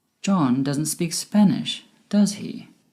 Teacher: My voice went down at the end with does he? Because I am sure he doesn't speak Spanish, but it would be great if you could confirm this with me. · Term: Falling intonation